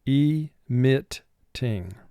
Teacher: it's a 2-syllable word, but the second syllable does get the emphasis